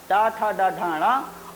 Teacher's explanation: इन वर्णों का उच्चारण स्थान मूर्धा होता है, और ये मूर्धन्य वर्ण कहलाते हैं।